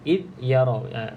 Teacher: Makhraj huruf za iaitu hujung lidah kena pada gigi bahagian atas. Okey, gigi depan bahagian atas. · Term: za mati